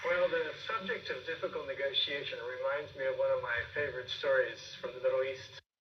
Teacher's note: we're rising at the beginning of the sentence